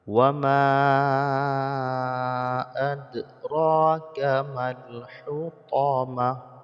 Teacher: Ma dibaca panjang 5 harokat karena mad jaiz munfasil.